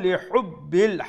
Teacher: হা from the middle throat, make sure so আমরা বড় হা উচ্চারণ করব।